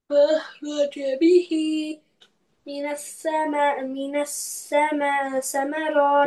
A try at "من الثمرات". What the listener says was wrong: It's not seen, okay? Don't read like a scene, like a whistle sound. Minas samarati. Touch your tongue, sides of front upper teeth. Minas samarati.